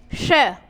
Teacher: तो इसका उच्चारण करेंगे तो जीभ किसको स्पर्श करेगी? तालु को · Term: तालव्य